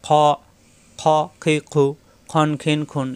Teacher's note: খ, খা হবে না। খ কণ্ঠনালীর শেষ অংশ থেকে উচ্চারণ।